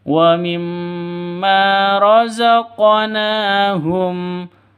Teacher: Di sini ada huruf qaf. Huruf qaf itu ketika sukun mati seperti ini berlaku hukum qalqalah. Dipantulkan ke huruf qafnya · Mim tasydidnya berdiri sendiri, artinya dengung 2 ketukan, gunnah musyaddadah. Terus ma panjang 2 ketukan karena ada alif diawali dengan fathah.